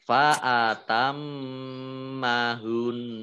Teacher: Tapi mendengung ditahan ya. Paling tidak 2 harokat.